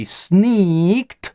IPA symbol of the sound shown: iː